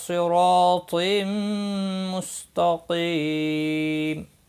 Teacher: تقیم، قاف مستعلیہ ہے، پور پڑا جائے گا، قی یا مدہ ہے، 1 الف کے برابر کھینچ کر پڑھیں گے، اور میم ساکن پڑا جائے گا وقف کی صورت میں۔ وقف بالاسکان ہوگا، مد العارض وقفی ہوگا، 3 سے 5 الف کے برابر کھینچ کر وقف کریں گے، اور ملانے کی صورت میں اظہار حلقی ہوگا۔